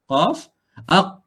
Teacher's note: Tapi kalau ni qaf, aq. Tekan dah tak keluar dah aliran suara. Dia akan tertahan aliran suara. Aq tak boleh pergi dah.